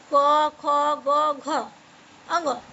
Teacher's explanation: क वर्ग को कंठ से बोला जाता है।